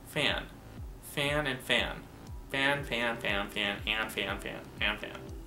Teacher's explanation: and in fan it's also nasalized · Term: nasalization of vowels